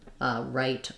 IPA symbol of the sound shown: aɪ